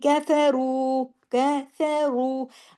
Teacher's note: रू र वाऊ पेश रू हैवी कर रहे हैं इसको क्योंकि उसके ऊपर पेश है